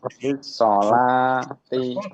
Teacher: lam samsiah mudghama fi sod maftuha